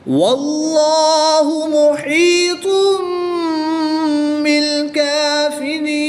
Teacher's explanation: تنوین کو میم سے بدل کر اخفا کر کے غنہ کر کے پڑھیں گے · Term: اقلاب